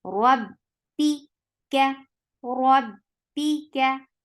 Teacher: Ra ra is attached with ba. Ba will get shiddat. The sound should be very much cut off right away.